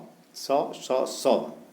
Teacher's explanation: तीनों स भी अघोष वर्ण होते हैं और तीनों स उष्म भी होते हैं